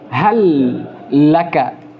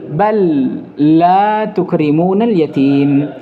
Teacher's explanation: disatukan lamnya, dimasukkan lamnya hal kepada lam setelahnya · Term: idgham